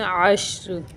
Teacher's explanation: عین شین زبر عش، را دو زیرن، عشرن، وقف کی صورت میں عشر، شین کو ادھر ہلنے نہیں دینا بالکل، شین کو اگر ہلائیں گے تو یہ حروف قلقلہ کی طرح ہو جائے گا، یہ حروف قلقلہ میں سے نہیں ہے، اس لیے اس کو بغیر ہلائے پڑھیں گے۔